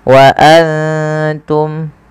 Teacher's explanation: jelaskan suara mimnya karena dia izhar syafawi